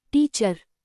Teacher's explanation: In the word teacher, the second part is unstressed. So the vowel in sounds like a soft not a strong ir or ur. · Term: schwa sound